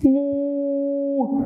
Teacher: لو ميم ضمة وراها واو المد، الواو تشدها قوي قوي قوي. مو مش مو، مو حركة قصيرة، إنما مو حركة طويلة.